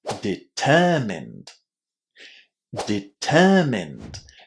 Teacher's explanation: But in here, the stress doesn't fall on the ending. Where do we put the stress? On the second syllable.